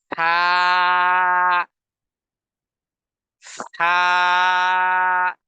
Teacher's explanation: জিহ্বার একেবারে সামনের আগা সামনের উপরের দুই দাঁতের আগার সাথে হালকা করে টাচ করে অত্যন্ত নরমভাবে আওয়াজকে ধাক্কা দিয়ে বলতে হবে